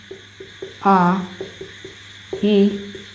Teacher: वे स्वर जिनको बोलते समय ओठ गोल नहीं होते या फिर सर्कुलर नहीं होते, उनको क्या बोला जाता है? अवृत्ताकार।